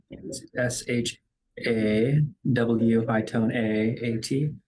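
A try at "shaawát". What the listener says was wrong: really close it's uh long long low first a and then short High second a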